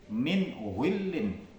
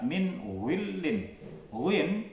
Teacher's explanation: sifat istiala artinya lidah itu naik ke langit-langit